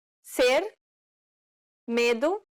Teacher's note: It's similar to the E in the word ne. However, try not to carry over the I sound too much. This is known as the closed E sound in Portuguese.